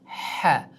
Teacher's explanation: Ha harfi halqumning o'rtasidan chiqadigan harf hisoblanadi. Ha. Halqum mana shu joy deb oladigan bo'lsak va mana bu joy, ya'ni erkaklarning kekirdigidan sal yuqori qism, mana bu joy ha harfining mahraji hisoblanadi.